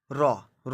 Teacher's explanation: র উচ্চারণ করতে গেলে আমাদের দন্তমূল অর্থাৎ দাঁতের গোড়ায় দেখবেন বারবার জিহ্বাটা আঘাত করে। আঘাত করা মানে কম্পিত। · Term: কম্পিত ব্যঞ্জন